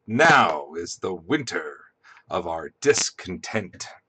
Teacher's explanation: are your feet right this first one is inverted right because the emphasis is on now not is